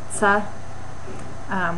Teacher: where you have a stop and a fricative together as one sound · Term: affricates